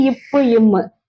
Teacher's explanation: இது வந்து மேல் இதழும் கீழ் இதழும் பொருந்துவதால் பிறக்கின்றது. இப் இம் ஒழிச்சு பார்த்தா ஒட்டுதுல.